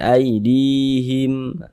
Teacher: di belakangnya ada baris satu ke bawah maka dibaca panjang di dibaca panjang Mad thii panjangnya dua harakat